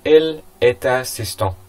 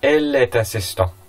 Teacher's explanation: So we are kind of merging them into one word. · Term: liaison